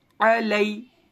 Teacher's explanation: یا ساکن سے پہلے لام پر زبر آ گیا, یا لین ہوگا, نرم آواز کے ساتھ جلدی ادا کریں گے